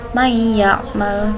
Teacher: Jadi di sini ada nun sukun yang bertemu dengan huruf ya. Nun sukun di sini tidak perlu dibaca sehingga langsung dimasukkan ke huruf ya. May ya'mal begitu. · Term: idgham bi gunnah